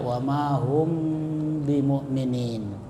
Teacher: Nah, syafawi itu artinya bibir. Jadi cara membacanya harus disuarakan samar-samar di bibir dan didengungkan. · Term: ikhfa syafawi